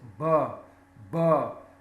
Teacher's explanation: produces vibration in the throat it's a voiced sound